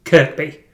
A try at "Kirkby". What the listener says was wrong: Kirby or Kirkby, you said there. No, it's Kirby. Yeah, Kirby. Yeah, the other K is a silent K.